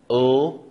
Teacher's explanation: that make it into this category is the ul sound where the tip of the tongue is very clearly touching that alveolar ridge